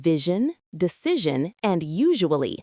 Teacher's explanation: round your lips slightly and buzz your vocal cords, just like a sh sound, but with voice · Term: zh sound